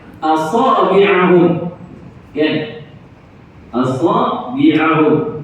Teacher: Sempurnakan huruf hamzah itu dengan bacaan yang nipis, sebab hamzah itu istifal, bukan isti'la.